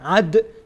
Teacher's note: دال از حروف قلقله قلقله میشه یعنی تکان میخوره